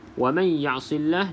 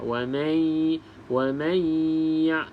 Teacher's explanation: nun yang kosong, selepasnya bukan lam ataupun ra, maka baca dengung 2 harakat. Di sini idgham ma'al gunnah lah. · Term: dengung idgham